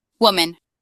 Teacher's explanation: putting the emphasis at the beginning of the word